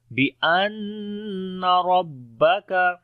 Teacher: را کو موٹا پڑھیں گے، کاف کو باریک پڑھیں گے